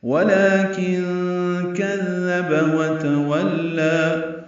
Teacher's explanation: کذب میں کاف دال نرمی سے پڑھیں گے، با کو جلدی سے پڑھنا ہے